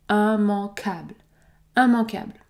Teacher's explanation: nous allons également prononcer la voyelle nasale en en puisque nous avons a n plus une consonne